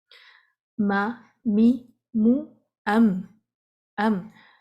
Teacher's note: ما، می، مو، ام میم کی نیزلائزیشن، اس کو نیزل ساؤنڈ کہتے ہیں، ناک کے حالی حصے سے جو آواز پیدا ہو رہی ہے، یہ اس کی اپنی کوالٹی ہے، ٹھیک ہے؟ دونوں ہونٹ آپس میں ملیں گے، آواز ناک سے آئے گی، تو ام یہ ایک شورٹ سی نیزلائزیشن، یہ پارٹ آف دس لیٹر ہے، اس کی کوالٹی ہے۔